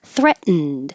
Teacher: you won't hear the T in the middle at all your tongue goes to the T position threat and then you